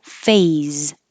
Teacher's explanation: make sure you use a Z. If not, it'll sound like face